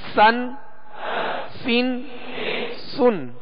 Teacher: اب سطر نمبر 4 میں سین دو زبر سن، سین دو زیر سن، سین دو پیش سن، سن سین سن۔ اس کو باریک پڑھیں گے اور سیٹی کی آواز میں پڑھیں گے